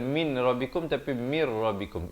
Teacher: idgham bila gunnah, masuk tanpa dengung ya